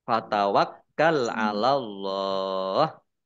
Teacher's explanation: kafnya dibaca dobel ada tasdidnya